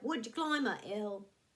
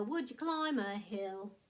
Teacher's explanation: the word ill is cut off the h and kind of pretty much cut off the l